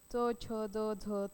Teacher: जिभेच्या पाते कठोर तालूला लागून ज्या वर्णाचे उच्चार होतात त्याला तालव्य वर्ण असे म्हणतात म्हणजे आपल जिभेचा शेंडा इथे लागतो आणि उच्चार होतो त्याला तालव्य